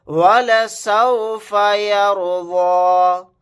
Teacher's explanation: रा को मोटा यानी पुर पढ़ेंगे